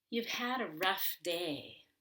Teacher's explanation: i want to emphasize had which is the main verb